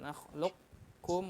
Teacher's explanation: boleh mampir ke makhraj qaf, tapi sifat qalqalahnya jangan dikeluarkan